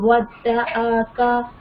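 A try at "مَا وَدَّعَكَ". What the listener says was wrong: ودعاک نہیں بولیں گے ، ودعاک کیوں نہیں ہم لمبا کر رہے ہیں؟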